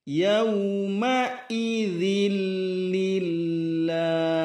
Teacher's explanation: Yauma idzil, ma'i ada tekanan hamzah, ma'idzil, kemudian huruf dzal lembut sekali ujung lidah. Yauma idzil lillah tarqiq tipis, lafzul jalalahnya tipis, kemudian diwaqafkan pada ujung huruf ha.